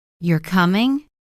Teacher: rising tone, it becomes a question I'm not sure I'm asking.